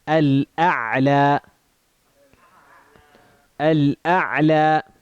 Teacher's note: a Hamza, which is from where? Yeah, the bottom of the throat, and then an Ain, which is the middle of the throat. So it's close, but they're still distinct.